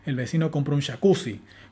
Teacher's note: con acento nuclear sobre la última palabra